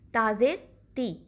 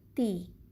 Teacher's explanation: عربی میں بھی اسی طرح سے اگر صرف زیر ہے تو ہم پڑھیں گے چھوٹی حرکت تا زیر تی. لیکن اگر اس کے آگے ایک یا ساکن آ گیا تو پڑھیں گے تی